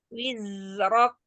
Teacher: Zai dialirkan terlebih dahulu, jangan sampai ke huruf sebelahnya, bukan ini. Alirkan dulu, kasih durasi panjang pada rokhwah zai